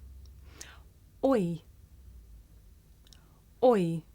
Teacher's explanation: this is a diphthong a double vowel sound the shape the mouth makes changes from the beginning of the word to the end it's pronounced oi did you notice how my mouth changed shape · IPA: ɔɪ